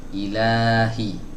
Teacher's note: ada Alif kecil nah ini fungsinya untuk memanjangkan sepakat fathah sebelumnya jadi ini dibaca panjang Mad Thobi'i 2 harokat